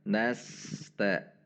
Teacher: Huruf sin ketika sukun memiliki sifat tidak tertahan. Sehingga cara membacanya mengalir. Tidak boleh diputus dengan huruf yang ada di depannya. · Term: sin sukun